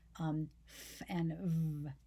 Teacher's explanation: labiodental, lips on the teeth